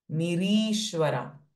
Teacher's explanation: So here this ni is raswa, but ri is dirgha.